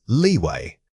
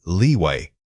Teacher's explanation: When you hit that long e sound in leeway, ensure your lips are fully spread. This sustained tension helps differentiate it from the short vowel.